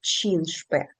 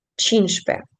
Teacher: А е значить, скоріш за все, ви почуєте чншпе, тобто ця часточка ч, вона не буде якби вимовлятися